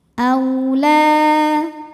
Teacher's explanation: Aulā, lā mad thabi'i muqaddar karena huruf lam berbaris fathah panjang, maka dibaca panjang lamnya dua harakat. · Au ada harfulin karena ada waw sukun didahului baris fathah, maka dibacanya lembut